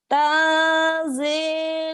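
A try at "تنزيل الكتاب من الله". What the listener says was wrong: tanzilul, nyamber dulu. Lul. Tangnya emang agak ngelebay. Tapi saat di lulnya jangan ngelebay. Tanzilul, lulnya tetap nyamber.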